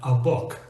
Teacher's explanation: the letter A, when we pronounce it in that word sounds exactly like our schwa